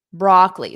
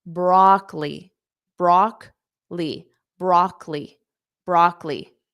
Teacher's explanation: So notice that second O is not pronounced.